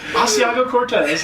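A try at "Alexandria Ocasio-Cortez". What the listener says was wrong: It's not Asiago. Alexander Ocasio-Cortez.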